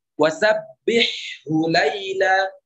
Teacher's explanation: huruf ha yang pertama tetap dibaca jelas, tidak dimasukkan kepada huruf ha. Sabbihhu tetap huruf tetap jelas.